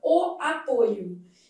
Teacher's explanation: o substantivo derivado do mesmo verbo apresenta a vogal o fechada, o apoio. Então, apoio substantivo apresenta a vogal fechada com esse timbre verdadeiro.